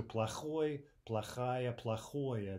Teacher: when the adjectival endings are stressed, you can clearly distinguish between them because you're not getting the reduction, right? So плохой, плохая, плохое, those are all clearly distinguishable, no matter how quickly someone's speaking.